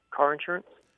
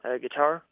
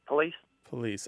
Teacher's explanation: people in the American South, more often than people in the American North, pronounce with the stress on the initial syllable